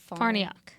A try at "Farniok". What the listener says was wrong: It's actually Farniak. It's with an O, Farniok, but it's pronounced Farniak.